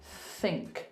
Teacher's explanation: Just literally, you're pushing air out with your tongue in between your teeth. There's an unvoiced TH in words like think · So we might go, just push the air out. Just literally, you're pushing air out with your tongue in between your teeth.